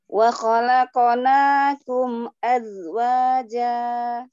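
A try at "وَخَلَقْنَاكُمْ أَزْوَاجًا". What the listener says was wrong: Mimnya alir sedikit. Wa khalaqanakum akum azwaja. Azwaja. Zainya alir umi. Ya, gabung coba.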